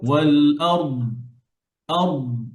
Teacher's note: দদকে ধরে রাখবেন, দদে কলকলা হয় না